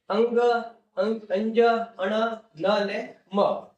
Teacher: જેને આપણે નાક દ્વારા બોલીએ જેને અનુનાસિક કહીશું.